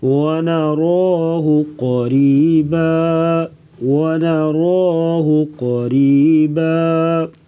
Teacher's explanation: ونراہ را کو موٹا پڑھیں گے, قاف کو بھی موٹا کریں گے